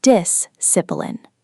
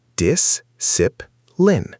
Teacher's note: Let's start with word stress, because in English, putting stress on the wrong syllable can make a word hard to understand, even if every sound is correct. First word, discipline. The stress is on the first syllable.